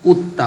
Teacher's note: দালকে তা দ্বারা পরিবর্তন করে তাকে তার মধ্যে ইদগাম করতে হবে